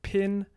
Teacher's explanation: there is a puff of air that comes after voiceless stops in certain contexts in English, and pin is one of those contexts. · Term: aspiration